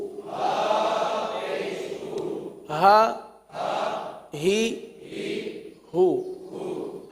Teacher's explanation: یہ دو چشمی والا ہا ہے جو کہاں سے ادا ہوتا ہے؟ حلق کے سب سے آخر والے حصے سے